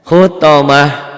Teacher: Khutamah, ini tak marbutoh, jika dihentikan bunyinya jadi ha